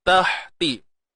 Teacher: matikan ha ni, sempitkan di tengah kerongkong kita. Ta baris bawah ti.